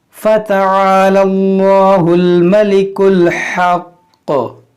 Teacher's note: رکیں گے تو پیش کو ساکن کریں گے اور تشدید کو ہم باقی رکھیں گے. تو کیسے رکیں گے, فَتَعَالَى اللَّهُ الْمَلِكُ الْحَقُّ, اس طرح سے ہم یہاں پر وقف کریں گے.